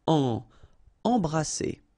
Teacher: Alright, E-M here, and then you've got a consonant after, so you get the nasal en. So you don't hear any M, it's really in your nose.